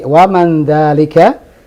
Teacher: Non mati ketemu zal. Memang di Al-Quran itu dibaca dengung ikhfa. Tapi kita dalam percakapan sehari-hari tidak ada ikhfa.